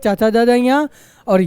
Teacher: ये तालू से बोली जाती है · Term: तालव्य